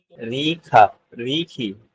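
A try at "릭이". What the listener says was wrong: রিকি। হ্যাঁ খিয়ক, কিন্তু এটা তো হচ্ছে আপনার নাম। নামের বেলায় আপনারা জানেন কোরিয়ানরা ক উচ্চারণের বেলায় খিয়ককে ব্যবহার করে, সো এটা হচ্ছে রিকি।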